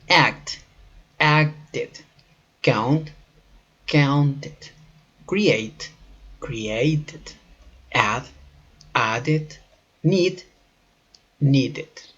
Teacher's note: Ed suena como ed cuando los verbos terminan en sonidos de t y sonido de d. Hay que tomar en cuenta que este sonido de ed tiene más parecido a ed que id.